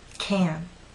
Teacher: The stressed can makes you pull your lips out, and your tongue is rather flat and pushed forward. Can. When it's unstressed, using this first pronunciation, your lips are slightly more relaxed, but your tongue is still flat and pushed forward.